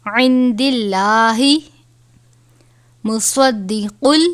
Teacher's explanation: صاد ہے حروف مستعلیہ میں سے، ہمیشہ اور ہر حالت میں پر یعنی موٹا پڑھا جاتا ہے